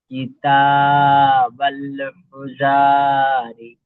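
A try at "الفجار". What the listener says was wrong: আপনি এখানে তাসদিদকে তো আগের অক্ষরের সাথে বাঁধাবেন, বেঁধিয়ে তারপরে পড়েন।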